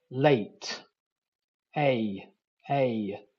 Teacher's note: it starts at the a position and moves up to the E position